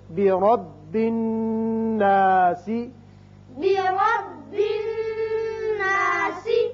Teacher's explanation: یہاں را کے اوپر زبر ہے. جب را پہ کے اوپر زبر ہو تو اس کو پر پڑھتے ہیں، منہ بھر کے پڑھتے ہیں